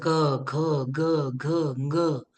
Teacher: ज्या वर्णाचं उच्चारण कंठस्थानातून होईल, कंठ म्हणजे गळ्यामधून होईल, त्या वर्णाचं स्थान काय झालं? कंठ.